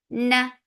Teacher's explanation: for fatha open jaws the sound short